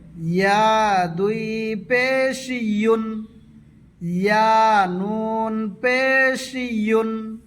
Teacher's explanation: ইয়া উচ্চারণ করার সময় যাতে হামজা না হয়ে যায়, জিহুবার মাঝ থেকে বলবে